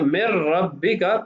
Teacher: اب دیکھیے یہاں نون ساکن ہے اور بعد والا حرف اگلے کلمہ میں وہ را ہے اور را حروف یرملون میں سے ہے، تو ہم ادغام کریں گے، نون کی جنس کو را میں تبدیل کریں گے لیکن غنہ نہیں کریں گے، اس لیے کہ را اور لام میں غنہ نہیں ہوتا، تو صیغہ من ربک پڑھا جائے گا، نون نہیں پڑھا جائے گا۔